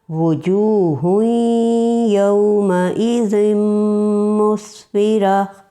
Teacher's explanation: واو متحرک کی مثال وجوہ یومئذ مسفرہ، وجوہ شروع کی واو ہونٹ بالکل گول ہو رہے ہیں